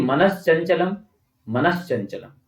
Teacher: क्योंकि इश्चुत्व संधि है, फाइनल में हमें इश्चुत्व यानी कि सकार और च वर्ग चाहिए, तो दंत्य स होगा। वो दंत्य स के स्थान पर तालव्य स हो जाएगा